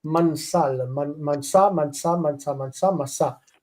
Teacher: The nun, when it's right up against another consonant with no vowel underneath it, a silent shva, it wants to disappear. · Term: assimilation